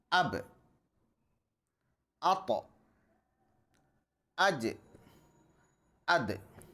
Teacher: قلقلہ یعنی دوبارہ آواز پلٹ کر آئے گی۔